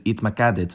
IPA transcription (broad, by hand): hitmaˈkadet